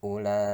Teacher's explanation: Sedangkan ulaika, la-nya itu ada bendera bertemu i hamzah tapi dalam satu kata. Maka itu mad wajib muttasil, wajib panjangnya 2,5 alif, tidak boleh kurang.